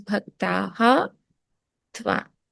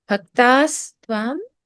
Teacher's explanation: Aha and the, when you put those together in the visarga table, you see that the visarga turns into a sa halant.